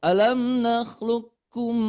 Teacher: kalau idgam mislain ini ditahan dulu sepanjang empat ketukan